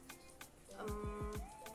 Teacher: dilafalkan dengan cara bibir atas dan bibir bawah tertutup namun gigi tetap terbuka m setelah itu ketika suara dikeluarkan udara keluar lewat hidung namun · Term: huruf M